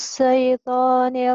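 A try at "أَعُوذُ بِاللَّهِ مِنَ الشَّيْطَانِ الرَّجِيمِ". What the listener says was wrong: sinnya lupa lagi. A'udzu billahi minasy gitu atuh. A'udzu billahi minasy shin gede. A'udzu billahi minasy.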